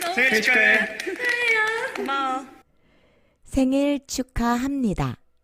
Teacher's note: 받침 비읍이 니은 앞에서 미음 소리로 발음되죠? 이렇게 비음이 아닌 소리가 비음으로 발음되는 현상을 비음화라고 합니다.